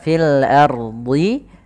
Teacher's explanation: pada lafal fil ardi, ro-nya di sini ro tebal, fil ardi. Kemudian jangan sampai kita membaca dengan fil ardi, ro-nya tipis.